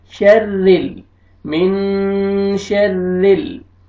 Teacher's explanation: ये देखिए नून साकिन के बाद शीन है हरूफ इख्फा में से, तो यहाँ पे आपने इख्फा करना है, नाक में आवाज लेके जाएंगे मिन, ठीक है। आगे रॉ मुशद्दद है लेकिन रॉ में ये ज़ेर है, रॉ को बारीक करके पढ़ेंगे।